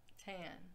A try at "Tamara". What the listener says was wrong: It's a long A.